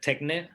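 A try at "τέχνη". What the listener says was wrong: I mean, there's an eta at the end of that word, so it's not techna. Techne.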